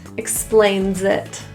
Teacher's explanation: The S in explains is also a voiced Z sound. Link it to it, it sounds like zit.